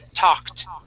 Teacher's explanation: Okay, when a word ends with a K sound, okay, Mm-hmm. and we stick an ed at the end, that ed makes a T sound